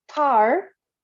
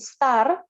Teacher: tar becomes aspirated because it is word initial di depan sendiri, tapi ketika dia di tengah setelah konsonan yang lain as in star, this is not aspirated.